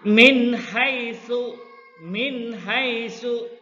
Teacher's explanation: Jadi nun matinya ini ya harus dibaca jelas ya, nun matinya dibaca jelas bertemu dengan huruf ha ya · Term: ijhar khalqi